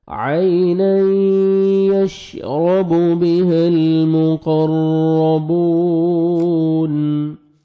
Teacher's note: عین یا لین ہے نرمی سے ادا کریں گے اور عین کو اپنے صحیح مخرج سے ادا کریں گے